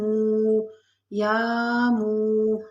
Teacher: واو ساکن اس سے پہلے پیش واو مدہ ہے تو اس کو بھی تھوڑا سا کھینچ کے پڑھیں گے